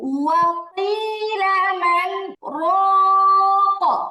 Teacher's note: র মোটা হবে, তিন আলিফ টানও হবে, কলকলাও হবে।